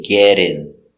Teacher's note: the T is pronounced with a D sound